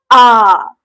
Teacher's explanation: आ का उच्चारण करते समय हमारा मुख द्वार जो है पूरा लगभग खुल रहा है ना, आ, ठीक। ये इसका उदाहरण है आ, ठीक। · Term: विवृत स्वर